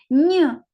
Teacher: ні приголосний м'який позначаємо двома рисочками